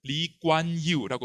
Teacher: 이겁니다 이광교 싱가포르의 국보죠 이광요인데 리콴유로 표기한 건 잘못됩니다 이광교 본인이 자기의 이름을 리관유라고 발음합니다 k는 무기음입니다